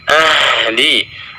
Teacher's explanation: suara ha dialirkan secara penuh